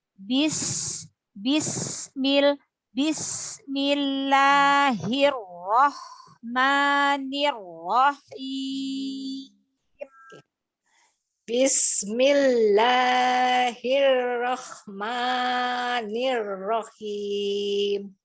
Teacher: Huruf sinnya dialirkan, sin sukunnya jangan diputus.